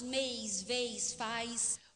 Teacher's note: E nós temos a ditongação, um processo inverso, diante de sibilante, de S e Z.